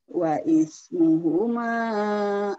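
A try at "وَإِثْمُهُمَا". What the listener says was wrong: Itu agak pelat, Ibu. Wa'is, is pelat. Wa'is, sak-sak pelat.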